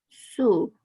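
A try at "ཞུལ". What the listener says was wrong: Sul. Sul. Sometimes it's hard for Chinese speakers to say the L at the end of a word because that doesn't happen in Chinese. So just fake it. Sul. L.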